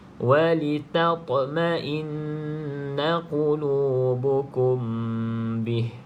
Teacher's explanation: Mim bertemu dengan ba, ikhfa hakiki, maka kita baca dengung tapi dengan kadar dengan cara bacaan ikhfa. Ikhfa ataupun sama dengan bacaan iqlab lah, kalau pendapat bibi atas bibi bawah yang rapat.